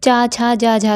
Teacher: तो आपकी जो जीभ है वो तालुब से लग रही है, तो ये तालव्य ध्वनियाँ हो गई